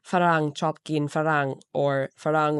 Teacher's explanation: And it's very difficult for Thai people to pronounce blended consonants like fur or because these sounds don't appear in Thai language. So instead of blending these consonants, they split them into two syllables.